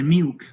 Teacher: Singapore English may pronounce milk, the dark L is not pronounced.